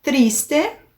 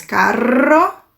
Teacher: 2 R's ou R no começo da palavra, ele tem um som mais forte, mais arrastado.